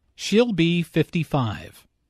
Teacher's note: Notice that 55 is stressed here.